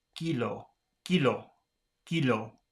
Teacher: the K should not have any breath when they say it. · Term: Spanish K